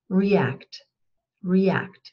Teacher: wenn die Vorsilbe unbetont ist und dann ein Vowel, ein Vokal folgt, wie bei react, dann ist es dieser abgeschwächte Green Sound, also dieser Green Sound, der nicht ganz so lang ist